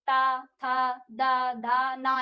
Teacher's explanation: अब इसमें देखिए हमारी जो जीभ है वो हमारा दांत को छू रही है। जीभ जो हमारी होती है वो दांतों को टच कर रही है।